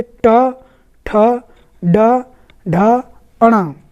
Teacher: इनको बोलने के लिए जीभ फोल्ड होती है, ऊपर से लग कर तालु में लग करके नीचे भी आती है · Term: मूर्धा व्यंजन